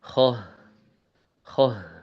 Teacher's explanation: Kha berbeda dengan ghain, dia ada aliran nafasnya. Jadi kalau kha ada apa kering gitu, nggak ada nafasnya.